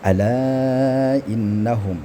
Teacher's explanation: Di sini kan jelas ada mad bertemu hamzah di lain kalimat sama hukumnya yaitu mad jail munfasil. Kemudian ada nun ghunnah musyaddadah didengungkan tiga harakat